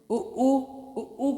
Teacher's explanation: उ को बोलने में ओंठ जो है आपस में जुड़े हुए होते हैं, इसलिए ये क्या कहलाता है, ओष्ठ कहलाता है।